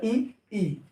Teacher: ई और ई, जो आपका ई और ई है, इनका उच्चारण होता है तालु से।